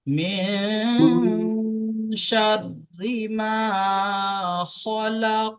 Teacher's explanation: من من شر ما خلق জি, ঠিক এখানেও লাস্ট আয়াতের লাস্টে কফ আছে, এখানে আমরা কফের উপর যখন সাকিন করব তখন কফের আওয়াজ ফিরে আসবে। মিন শাররি মা খলাক।